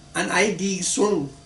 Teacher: Vietnamese would say, An I đi xuống, with the sentence going up.